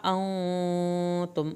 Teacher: انتم نون پہ غنہ کریں، میم نہیں ہلے